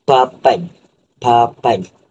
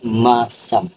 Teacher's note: bunyi dua bibir, iaitu bibir atas dan juga bawah bertemu, iaitu bunyi P, B, M, iaitu P, B dengan M. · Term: bilabial